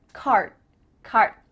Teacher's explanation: My tongue is flat against the roof of my mouth to make the D, but it's not coming out.